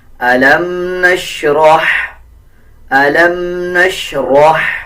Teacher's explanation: را کو ہا کے ساتھ ملا کے پڑھیں گے، را کو پر پڑھیں گے اور ہا کو باریک پڑھیں گے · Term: باریک ہا